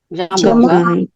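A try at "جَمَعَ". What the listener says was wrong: Ang ga, yung may tuldok, ito walang tuldok, kaya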